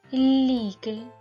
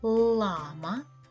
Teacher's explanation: у слові лійки звук ль м'який у слові Лама звук л твердий